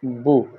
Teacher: تو زبر کا مطلب ہے کہ زبر والے حرف کی آواز اوپر جائے گی با، زیر والے کی نیچے آئے گی بی، پیش والے کی سامنے جائے گی بو۔ पेश पड़ते हुए होंठ चोंच की तरह हो जाएंगे, जैसे परिंदे की चोंच